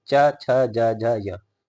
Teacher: तो जो टंग है वह आपके दांत के पीछे और ऊपर साइड में टच होती है। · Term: तालव्य